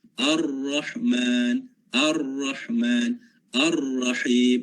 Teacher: Bentuk getaran, para ulama tajwid menyatakan getarannya adalah getaran yang ringan. Hujung lidah kita semasa sebut huruf ra, dia ada getaran yang ringan. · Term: takrir